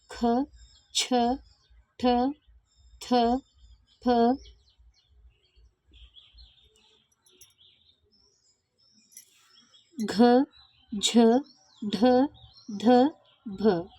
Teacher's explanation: ಹೆಚ್ಚು ಉಸಿರಿನಿಂದ ಉಚ್ಚರಿಸಲಾಗುವ ವ್ಯಂಜನಗಳು ಮಹಾಪ್ರಾಣಾಕ್ಷರಗಳಾಗಿವೆ